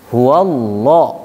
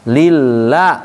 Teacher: Ada bunyinya la, ada bunyinya lo. Huwallah berarti tebal. Lillah berarti tipis. Tebal. Bahasa tajwidnya adalah tafkhim, tarkik, tipis, tarkik. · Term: lam jalalah